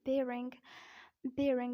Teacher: it is the same both in British accent in American accent because R is followed by I so we will pronounce this word an r in this word